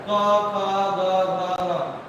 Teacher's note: जो दूसरे चौथे है वो महाप्राण है और पहले और तीसरे अल्पप्राण है